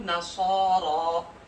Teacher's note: نصارا کی صاد اور را کو موٹا پڑھ رہے ہیں